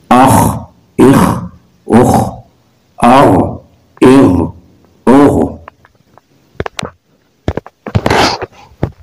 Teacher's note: خا اور غین دونوں حروف حلقی ہیں، ان میں فرق واضح کرنا ہوگا، اور دونوں حروف مستعلیہ بھی ہیں، اس لیے ان کو خوب موٹا کر کے پڑھیں گے۔